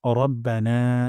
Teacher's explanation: র মোটা করে পড়বো রা বলবো না